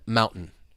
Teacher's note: be pronounced as a gladle t think about the word Mountain you have a t followed by a vowel sound followed by the N sound so that t in Mountain it's pronounced as a glottal te